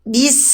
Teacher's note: Yang mengalir itu sin, bukan baknya yang dihentakkan.